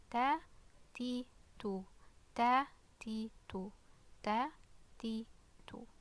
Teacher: Like it's dry, no air, no aspiration, okay? Maybe a bit towards the end, okay?